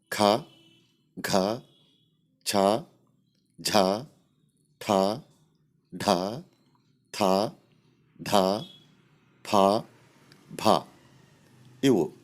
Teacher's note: ಹೆಚ್ಚು ಉಸಿರಿನಿಂದ ಉಚ್ಚರಿಸಲ್ಪಡುವ ಅಕ್ಷರಗಳನ್ನು ಮಹಾಪ್ರಾಣ ಎಂದು ಕರೆಯಲಾಗುತ್ತದೆ.